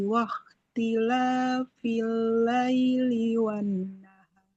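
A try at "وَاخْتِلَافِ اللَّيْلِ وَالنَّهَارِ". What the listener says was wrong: Huruf kho-nya kurang mengalir suaranya.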